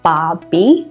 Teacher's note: we don't say the R sound in this one so it's just bah-bee Chrissy short for Christmas so it's coming